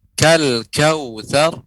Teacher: Ibu, pengucapan lam kal kautsar jangan sampai terdengar seperti lamnya ini memantul